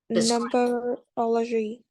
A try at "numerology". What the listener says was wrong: is not number is numberology numerology